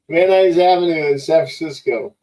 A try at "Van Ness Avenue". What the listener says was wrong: Why do they pronounce it Van Nuys when it's spelled Van Ness? Van Ness, Van Nuys, Van Ness.